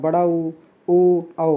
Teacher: वह स्वर जिनका उच्चारण करते समय ओष्ठ जो हैं गोल हो जाते हैं, अर्थात वृत्त, ये वृत्त हो गया है, वृत्त आकृति ग्रहण कर लेते हैं, मतलब गोल हो जाते हैं। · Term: वृत्ताकार स्वर